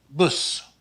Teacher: the short u is also rounded a bit more than the short u in english